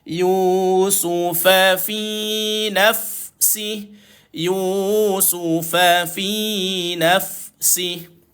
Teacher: Su satu, fa satu, fi dua harakat.